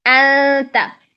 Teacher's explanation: تا کے مخرج کے اندر جا کے اخفا کریں